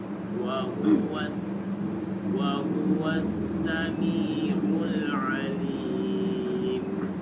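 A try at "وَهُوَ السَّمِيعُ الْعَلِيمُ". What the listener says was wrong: Ain bukan tempatnya di mana? Bukan di hidung. Ain itu tempatnya di tenggorokan, bukan bukan tapi ya. Kalau kita pencet hidung dia bermasalah, berarti keliru. Kalau bunyinya berarti dia keliru karena dia bukan ke hidung.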